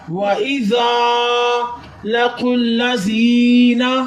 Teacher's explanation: وَإِذَا لَقُوا الَّذِينَ، زال کو نرمی کے ساتھ ادا کریں، اوپر والے دانتوں کو زبان کے اگلے والے حصے کے ساتھ لگائیں گے تو زال نرمی کے ساتھ ادا ہوگا۔ یہاں الف مدہ ہو رہا ہے، الف سے پہلے زبر ہو تو الف مدہ ہوتا ہے۔